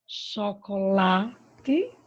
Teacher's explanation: A sílaba mais forte é o lá